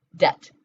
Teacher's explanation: D-E-B-T, right? But we don't pronounce the B.